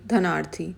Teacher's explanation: यहां पर धन का अ और दूसरे शब्द का अ मिलकर क्या बना रहे हैं आ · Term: दीर्घ संधि